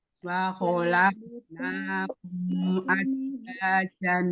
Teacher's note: Kho dibaca tebal, ditebalkan dengan cara mengangkat pangkal lidah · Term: sifat tebal